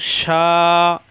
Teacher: ইয়গ শিন খাড়া জবর শা, জিব্বার মাঝখানে উপরে তালুতে শা শা আওয়াজ হবে, মাদের হরফ এক আলিফ টান খাড়া জবর।